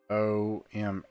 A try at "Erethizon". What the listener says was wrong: N at the end.